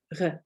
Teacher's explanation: the R in German is a little bit like the R in French, in that it comes from the back of your throat, but it's not quite as harsh as a French R, I would say.